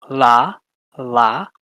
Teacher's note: the back and lastly we have some laterals so you have a dental lateral where you put your tongue up to your teeth let the air flow around it